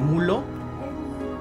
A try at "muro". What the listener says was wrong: No sabe pronunciar la R.